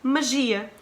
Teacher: Se tens ali um ia no final, a tua sílaba tónica vai sempre ser aí.